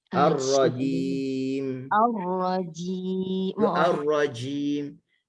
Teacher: Jim kan jangan bagi ada angin.